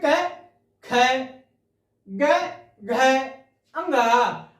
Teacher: हम पहले में हल्के मात्रा में बोलते हैं, दूसरे में तेज मात्रा में बोलेंगे, तीसरे फिर हल्के बोलेंगे, चौथे को फिर तेज बोलेंगे, पांचवें को फिर हल्का करते हैं।